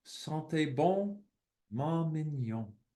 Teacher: Each line contains exactly 3 syllables. The accent falls on the final syllable in each line.